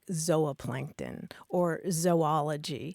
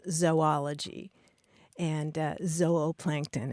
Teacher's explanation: the super traditional scientific uh pronunciation would be a long o sound